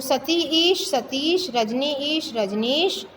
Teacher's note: अब दीर्घ है दोनों तो भी दीर्घ ई रहेगी।